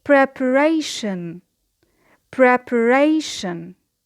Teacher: It is a word of 4 syllables and the stress, as you notice, is on the third syllable just before the suffix ion. And as you know, there is a rule in English, any word in English which ends with ion, the suffix ion, we have the stress just before that syllable, like preparation.